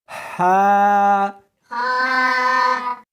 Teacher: اس کو حلق میں سے نکالنا ہے اور ساتھ میں ہوا بھی ہونی چاہیے. ہا ہاں نہیں پڑھنی بلکہ اس کو حلق میں سے نکالنا ہے، سینے میں سے نہیں نکالنا۔